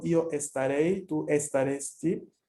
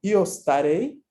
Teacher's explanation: ahí no hay ninguna E antes de la S. Entonces, lo primero que vas a pronunciar es la S, no la E.